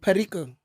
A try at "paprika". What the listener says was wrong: and both are wrong. Paprika. You putting some like wrong emphasis on the wrong syllable.